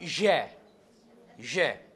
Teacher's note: the front or the blade of the tongue against the palette